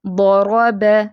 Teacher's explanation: حسد، اب اس کو حسد ایسے نہیں پڑھنا، حسد، حسد، ضرب، ضاد اور را دونوں فیٹ ہیں اور با باریک ، ضرب۔ حرکات ثلاثہ میں سے اب اگلی حرکت جو ہے